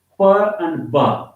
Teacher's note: the leaves they come into close contact with each other and there is a total closure and the air gets compressed · Because during the production of these sounds, the soft palate and uvula, the back of the roof of mouth, it rises up to close the nasal passages, and then uh, we both of the lips they come into close contact with each other, and there is a total closure, and the air gets compressed, and then it air escapes when the lower lip is removed suddenly from the upper lip. · The air escapes through the oral passage or the oral cavity with an explosion. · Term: plosive sounds